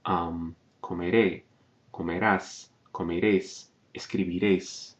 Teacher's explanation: all of the endings, except for the first person plural or nosotros or nosotras form, are stressed on the final syllable.